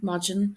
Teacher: in Connacht, they do pronounce this D like a G